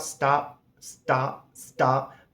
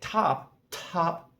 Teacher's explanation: So, uh, English possives are aspirated, meaning if I say the word stop after the T, there's no real air that comes out. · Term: aspiration